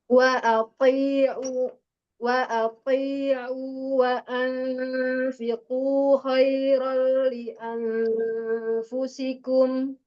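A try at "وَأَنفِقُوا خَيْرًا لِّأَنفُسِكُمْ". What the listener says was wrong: Nah, iya konsentrasi pada tempo-tempo ikhfanya. Ya, di sini ada tempo ikhfa wa anfiqu. Jadi lebih lama lagi sedikit ya.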